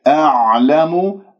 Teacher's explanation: أعلم عين ساكنة، تعلمون عين ساكنة، العين أحبتي عميقة يعني وسط الحلقة، وأنت تحس بانزعاج في المخرج وكأنك عم تبلع شيء